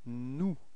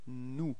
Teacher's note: So you've got this final S, but you don't pronounce it.